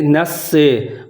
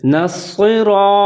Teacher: اب یہاں صاد ہے، بعض لوگ سین پڑھ لیتے ہیں نس سے، وہ درست نہیں ہے، نصرا۔